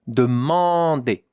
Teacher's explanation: A-N is the sound en in French. It's a nasal sound, so a bit of air has to come here through your nose.